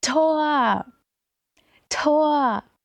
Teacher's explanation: When Germans get excited and yell Tor, they will actually stretch the O for as long as they possibly can. So it's Tor, Tor.